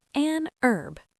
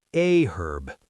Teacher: Like the word herb. In American English, the H is silent, so it's an herb. But in British English, they pronounce the H, so it's a herb. Both are correct.